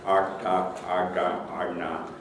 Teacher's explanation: And if you speak Indian languages, for instance, you'll have sounds made with the tongue curled back